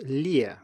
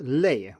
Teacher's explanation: in lie it's slightly more relaxed it's farther down or more open if you will and in the other case lay it is more closed and a little bit higher up